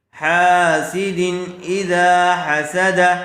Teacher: حا سین دال تینوں کے اوپر زبر ہے، اس لیے تینوں کو جلدی پڑھیں گے، کھینچیں گے نہیں۔ حاسد اذا حسد، تنوین کے بعد حروف حلقی میں سے حمزہ آیا ہوا ہے، اس لیے بغیر غننے کے جلد اظہار کر کے پڑھیں گے۔